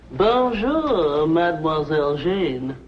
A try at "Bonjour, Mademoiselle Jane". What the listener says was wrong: That's very good. Except for the mwah. Must be soft.